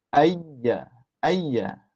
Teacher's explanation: ha maka dia akan dapat apa akan dapat A apa ni Tengah lidah tu akan ditolak ke langit maka dapat huruf ya